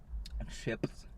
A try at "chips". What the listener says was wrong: I hate that you're putting so much emphasis on the P.